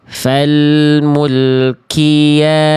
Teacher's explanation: Yang paling kerasa karena huruf qof-nya keluar percikan. Keluar percikan apa? Keluar percikan nafas.